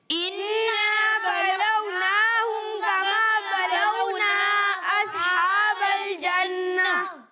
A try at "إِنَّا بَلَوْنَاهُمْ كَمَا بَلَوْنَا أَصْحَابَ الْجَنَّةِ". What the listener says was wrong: ابھی بھی جو ہے وہ مد کی مقدار پوری نہیں ہوئی، اسے تھوڑا زیادہ کھینچنا ہے، ٹھیک ہے. کما بلونا، یہاں نا کو تھوڑا زیادہ کھینچنا ہے، ٹھیک ہے.